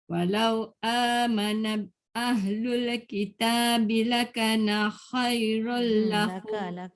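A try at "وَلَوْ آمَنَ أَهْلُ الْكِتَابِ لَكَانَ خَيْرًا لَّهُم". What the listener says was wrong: Laka panjang. Na tak boleh panjang. lakana khairan lahum.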